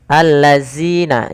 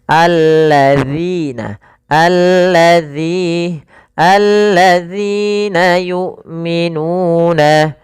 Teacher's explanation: Usahakan lidahnya nempel, jangan allazina, jangan dibaca dengan allazina yu'minu, tapi alladzina yu'minuna. Hamzahnya sempurnakan, jangan yu'minuna tapi jangan pula yu'minuna, jangan o tapi u.